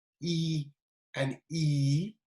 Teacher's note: palatal vowels, pronounced with the tip of the tongue raised towards the hard palate